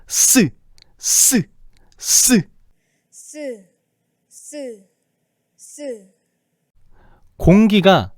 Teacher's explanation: 혀끝과 윗인몸에 좁은 통로를 지나면서 마찰이 일어나고 있어. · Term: 마찰음